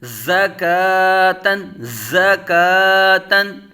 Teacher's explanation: زا زبر زا، کاف کھڑا زبر کا، زکا، تا دو زبر تن، زکاتن۔ زا حروف صفیریہ میں سے سختی سے پڑھا جائے گا، سیٹی کی طرح تیز آواز، زا کو ادا کرتے وقت، ز متحرک۔